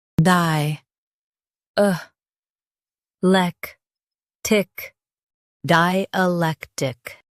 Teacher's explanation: Emphasize lec and keep di- and tic smooth.